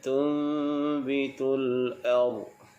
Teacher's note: Bila kita waqaf, pastikan huruf dad itu dibaca dengan tebal dan tidak bunyi melantun. Sebab huruf dad ini bukan huruf qalqalah.